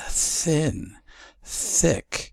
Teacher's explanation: there's no vocal cord interplay in that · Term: unvoiced